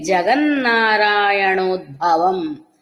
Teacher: ఉద్భవంలో మహాప్రాణ భకారం పలకాలి